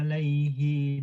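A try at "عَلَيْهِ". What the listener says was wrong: alaihi, hi-nya pendek.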